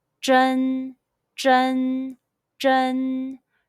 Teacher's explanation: Let's combine the initial zh, the final n, and the high-pitched first tone all together. Zh, en, zhen.